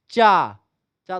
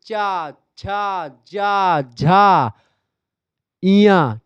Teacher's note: तालू से जाकर के आपकी जीभ टच होगी चा चा तालू से टच होर चा छ जा झा इया